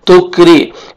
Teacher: रॉ को बारीक पढ़ेंगे, रॉ के नीचे जेर है